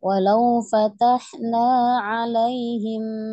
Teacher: Hanya ainnya masih kurang pas ya. Terdengarnya masih mirip Hamzah. Coba dinaikkan lagi dari tengah tenggorokan.